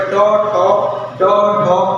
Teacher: मूर्धन्य के द्वारा जो बोले जाते हैं वो ट वर्ग के व्यंजन बोले जाते हैं